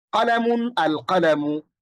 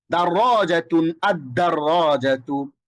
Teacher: আল কলামু, এখানে লামটা উচ্চারিত হয়েছে, কিন্তু আদ-দাররাজাত যখন বলছি তখন লামটা উচ্চারিত হচ্ছে না।